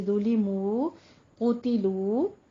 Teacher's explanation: दोनों होंठ गोल करके थोड़ा सा आवाज को लंबा खींचना है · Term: वाव मद्दा